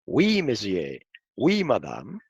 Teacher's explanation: La combinación vocálica wi, un diptongo, hace el sonido oui con W como en el francés, cuando se dice sí en francés, oui monsieur, oui madame.